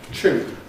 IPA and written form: ʧuːn (tune)